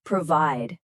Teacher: The stress is at the end, provide.